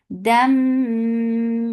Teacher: Dam idgham with gunna, so keep the sound in your nose for a longer time.